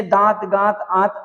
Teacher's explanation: ऐसे स्वरों का उच्चारण नाक और मुंह दोनों से होता है। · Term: अनुनासिक